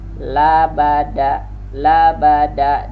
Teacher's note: La huruf lisan, ba huruf syafawi, pertemuan bibir atas dan bibir bawah. Kalau da ujung lidah dengan pangkal gigi atas. Labada, labada, dan da ini pun juga termasuk syiddah, tertahan dia.